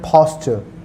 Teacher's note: I have used the word aspirated P, यानी मैंने फा का साउंड इस्तेमाल किया है इसमें